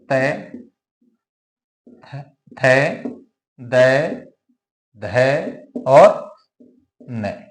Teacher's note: हमारी जो जीवा है जीवा की जो ऊपरी नोक है वो ऊपरी नोक ऊपर के जो दांत है उन ऊपर के दांतों का जो भीतरी भाग है उसको स्पर्श करते हुए इनका उच्चारण करेगी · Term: दंत व्यंजन